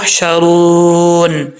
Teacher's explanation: را کے بعد واو مدہ ہے، واو ساکن سے پہلے پیش ہو تو واو مدہ ہوتا ہے، تو یہاں پہ ایک الف کی مقدار لمبا کریں گے